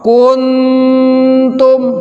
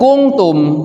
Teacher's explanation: disamarkannya itu mendekati dengan huruf nun sukun dan dikasih gunnah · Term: ikhfa